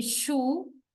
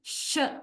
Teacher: Sh sound, you can find it's mostly the place is not exactly the alveolar ridge, right? It is more to the palatal region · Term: alveolar palatal